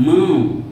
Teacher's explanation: Sai pela boca e ao mesmo tempo sai pelo nariz. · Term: ditongo nasal